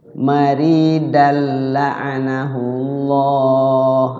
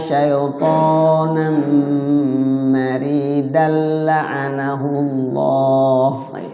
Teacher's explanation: tanwinnya fathatainnya dimasukkan ke lam dan di lamnya enggak ada guna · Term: idgham bila gun